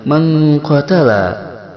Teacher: Ikhfa'nya adalah ikhfa ab'ad, yaitu membaca nunnya disamarkan dengan dominan berdengung mendekati eng